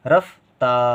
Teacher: र के बाद तुरंत फ की आवाज आ रही है लेकिन कम देर के लिए